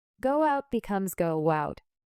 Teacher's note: If the first word ends with an o sound, we add a small w sound. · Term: linking vowel to vowel